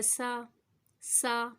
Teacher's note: اب جب سین کو پڑھ رہے ہیں تو خیال ہے کہ اس کے اندر سیٹی ہونی چاہیے، اس کے بعد باریک ہونی چاہیے